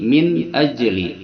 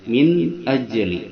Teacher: bertemu Hamzah maka di sini ada hukum bacaan idhar halqi yaitu baca nunnya jelas karena dia berhadapan dengan huruf halq huruf tenggorokan yaitu Hamzah